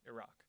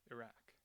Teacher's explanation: Democrats were more likely to use the AA vowel Iraq which is closer to the actual Arabic pronunciation